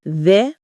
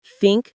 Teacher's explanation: There vibrates. Think doesn't.